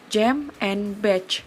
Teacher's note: air is blocked with tongue just beyond the alveolar ridge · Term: affricates